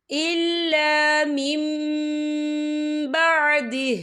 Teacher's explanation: یہ دیکھیں الا مم، یہاں نون ساکن ہے، نون ساکن کے بعد جو ہے با آ رہا ہے، تو یہاں پر اقلاب ہوگا یعنی تبدیلی ہوگی۔ ہم پچھلے میم کو اگلے میم کے ساتھ ملا کر پڑھیں گے اور ہم یہاں غنہ بھی کریں گے